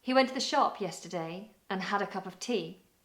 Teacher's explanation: you'll notice words like to, the, and, a, of became weak. They made use of a schwa sound, t, the, and, of. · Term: weak forms